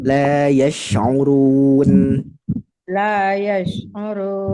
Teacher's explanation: Jadi shinnya lebih menyebar. Nah, lebih menyebar lagi udaranya. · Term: huruf shin